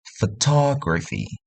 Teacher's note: Ta itu ditekan berletak di ketiga akhir.